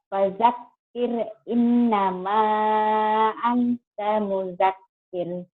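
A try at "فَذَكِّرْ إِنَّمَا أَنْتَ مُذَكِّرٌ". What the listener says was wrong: Fadzakir jangan pajakir ya. Zal. Fadzakir innama anta mudzakir. Jangan terlalu rapuh.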